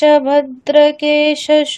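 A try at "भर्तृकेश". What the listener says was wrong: ভদ্র নয়, ভর্তৃ, ভর্তৃ।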